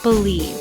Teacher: Believe. 2 syllables. Stressed syllable is second.